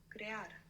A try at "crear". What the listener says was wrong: Good. Crear.